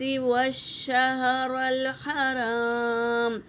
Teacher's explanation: واو کو شین میں ملائیں گے، تشدید ہے نا